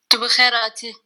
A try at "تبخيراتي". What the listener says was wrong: Oh, très bonne prononciation.